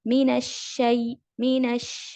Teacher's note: اور شین جو ہے اس پر اسپریئنگ ساؤنڈ آئے گا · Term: تفشی کی صفت